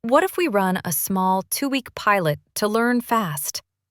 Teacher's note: I said, "What if we run a small 2-week pilot to learn fast?" I kept my voice steady with a gentle fall at the end. Not uptalk.